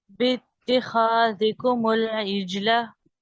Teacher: बा को डायरेक्ट ता के साथ मिलाना है। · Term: हमजा वसल